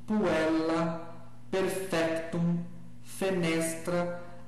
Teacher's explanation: essas palavras vão ter a tônica na penúltima sílaba, porque essa sílaba é a longa